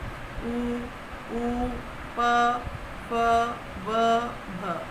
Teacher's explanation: ओष्ठ्य, जिनका उच्चारण दोनों होठों की सहायता से होता है